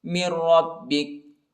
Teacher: میم کو را کے ساتھ ملائیں گے، نون ساکنہ ہی، نون نہیں پڑھا جاتا ، اور را کو با کے ساتھ ملائیں گے، مِنْ رَبِّكَ،